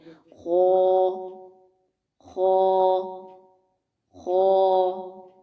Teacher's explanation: لیکن ایک اور بات ہم نے یہ بھی پڑھی تھی کہ الف ہمیشہ اپنے سے پیچھے والے حرف کے تابع ہوتا ہے، اگر پیچھے آنے والا حرف باریک ہو تو الف باریک ہوگا، اگر پیچھے آنے والا حرف موٹا ہو تو الف بھی موٹا ہوگا۔ تو یہاں چونکہ خا موٹا ہے تو اس وجہ سے الف کو بھی موٹا ادا کریں گے۔ تو مطلب یہ ہوا کہ جتنی دیر تک ہم الف کو لمبا کریں گے، جو ٹائم دیں گے، اس میں آواز کا جو دباؤ ہے، جو پریشر ہے، وہ تالو کی جانب ہوگا، آواز کو ٹریپ کریں گے، منہ بھر کے ادا کریں گے، خو، خو، خو۔